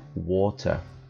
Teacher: Você vê, inclusive, na forma de pronunciar, que o fonema ele é muito parecido com a letra R. Já no inglês britânico, o fonema já é um T propriamente dito e eles fazem questão de utilizar esse T.